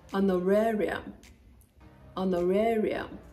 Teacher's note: So the H is silent, it's not honorarium, no. The H is there, but it is non-existent when you're pronouncing it. · In honorarium, the stress is on the third syllable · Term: silent H